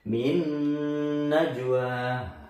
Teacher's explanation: Min najwa. Dibaca dengung kira-kira 2 sampai 3 ketukan.